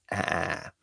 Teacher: your tongue is a little bit forward